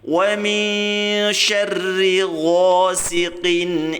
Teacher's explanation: Kemudian ayat ketiga, wa min syarri, kaidahnya sama, nun sukun bertemu shin ya, kita baca dengung atau kita tahan suaranya dengan persiapan mengucapkan huruf shin ya, bacaan ikhfa namanya.